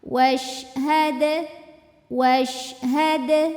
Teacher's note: huruf Dal ini keluarnya dari ujung lidah bertemu dengan tempat tumbuh dua gigi seri atas pangkal gigi